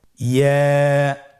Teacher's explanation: ইয়া হরফটি উচ্চারণের ক্ষেত্রে বারিক হবে এবং 1 আলিফ টেনে পড়তে হবে